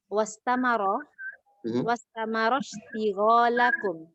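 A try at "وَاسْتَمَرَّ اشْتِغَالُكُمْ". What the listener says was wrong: Kenapa istigholakum? Kenapa di fathah?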